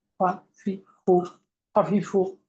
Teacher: এরপর একটা হলো ফা, উপরের দাঁত নিচের ঠোঁটের পেটের সঙ্গে লাগিয়ে, এটা তাড়াতাড়ি পাতলা